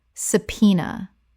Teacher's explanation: Three syllables with the b completely silent